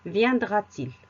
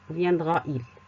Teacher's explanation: Et le il commence par un I. Donc, pour éviter qu'il y ait deux voyelles à la suite, on intercale un T.